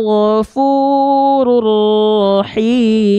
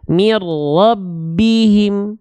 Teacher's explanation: Leburkan bunyi un pada ra. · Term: idgham bila gunnah